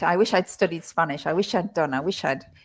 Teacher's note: that wish I'd really is tricky to pick up when you're listening because it's so squashed together